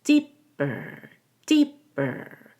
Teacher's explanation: you'll over emphasize the ER which needs to get reduced so we hold the p and let out a gentler B deeper deeper and that b-e-r is lower in pitch and quieter · the p and let out a gentler B deeper deeper and that b-e-r is lower in pitch and quieter than deep ER